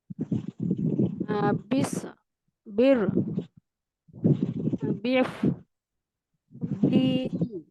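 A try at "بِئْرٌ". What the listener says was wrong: না, এখানে টান হবে না আপু, হামজা আছে বে। না আপু, এই যে এখানে তো টান দেওয়ার কিছুই আসে নাই আপু, বা হামজাজের বে। এখানে তো কোনো টানের নিয়ম আসে নাই, তাহলে আপনি টানবেন কেন আপু?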